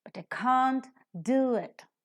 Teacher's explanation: Whenever the helping verb is with a negative particle, that becomes accented because not is an adjective, an adverb that is used, and adverbs are to be accented.